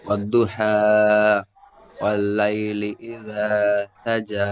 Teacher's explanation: জিমের উপরে খাড়া জবর আছে, খাড়া জবর আলিফ মাদ্দার সমতুল্য, তাই একে আলিফ মাদ্দার মতো এক আলিফ পরিমাণ টান দিয়ে পড়বো। যেমন ওয়াদ্দুহা ওয়াল্লাইলি ইযা সাজা।